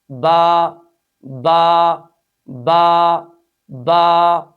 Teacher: اس حرف کے اندر صفت استفال ہے، صفت انفتاح ہے، لہٰذا اس حرف کو خوب باریک ادا کریں گے